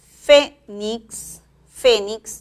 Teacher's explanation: Fénix lleva la mayor fuerza de voz en la primera sílaba